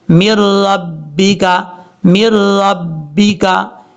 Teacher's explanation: میم را زیر مر، را بازبر رب بازر بی، کاف زبر کا مر ربی کا۔ اب یہاں پر ادغام تو ہو رہا ہے لیکن غنہ نہیں ہو رہا، ہم یہاں غنہ نہیں کر سکتے، مر ربی کا مر ربی کا۔